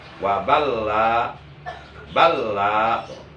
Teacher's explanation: Lam pertama sukun, wujubul idgham, wajib diidghamkan ke lam yang kedua, jadi balla.